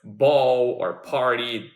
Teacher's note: Words such as ball or party, their initial sounds, the B and the P, both of them require both lips to be produced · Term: bilabial sounds